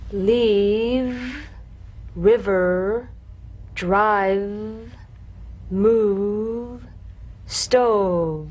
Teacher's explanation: You'll feel a gentle, dark, buzzing vibration on the lower lip. All suggestion of the F must be out of there, otherwise your V sounds like an F.